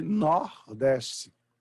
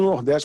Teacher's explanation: se falar até lá da porque se fala com a aberto todas as vezes que a gente quer arremedar ou imitar o sotaque do Nordeste a gente passa usar vogais abertas nos lugares em que tendenciosamente não estaríamos vogais fechadas no português